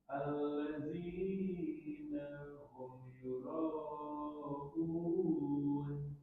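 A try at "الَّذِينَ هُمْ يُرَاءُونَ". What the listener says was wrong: Coba zalnya agak maju sedikit untuk betul-betul dia za. Alladzina. Jadi tercampur dengan za. Maka sedikit majukan lagi ri. Alladzina. Za.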